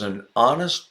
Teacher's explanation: have a vowel sound butting up against a vowel sound yeah the word honest starts with a vowel sound the H is silent